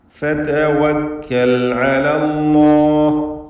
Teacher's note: ഫതവക്കൽ എല്ലാ ഹർഫുകൾക്കും തർക്കീഖാണ് എന്നത് പ്രത്യേകം ശ്രദ്ധിക്കേണ്ടതാണ്.